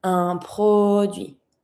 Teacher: A product, un produit. And don't pronounce the T.